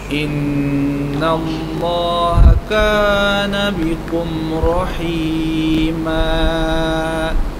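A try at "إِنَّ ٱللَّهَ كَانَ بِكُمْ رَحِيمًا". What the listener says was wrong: Rahima berapa harakat tu? Rahima betul baca berapa harakat? Mat apa dah? Mat iwad. Berapa harakat mat iwad? 2. Baca bagi bunyi 2. Innallaha kana bikum rahima. Rahima. Itu dah lebih 2 orang.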